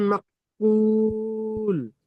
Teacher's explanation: ফা মিম দুই জের ফিন কাস ফিম মিম আলিফ জের মা মিম, ফাজা আলা হুম মিম আলিফ নয়, হামজার উপর সাকিন এসেছে, একটু ঝটকা বা ধাক্কা দিয়ে পড়তে হবে। মিম হামজা যাবার মা।